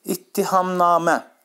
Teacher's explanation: qoşa T olarsa, onların ikincisi D kimi tələffüz olunur. Sözdə qoşa T samitindən istifadə edilmişdir.